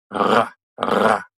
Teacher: When you do it right, your uvula, that hangy-downy thing at the back of your throat, will vibrate against your tongue. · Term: French R